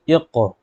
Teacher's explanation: قاف کے اوپر ہے جزم، ٹھیک ہے، تو قاف پر قلقلہ بھی ہوگا